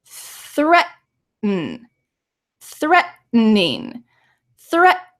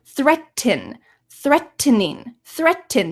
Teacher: did you hear a strong T probably not because this T sound is swallowed it's in my throat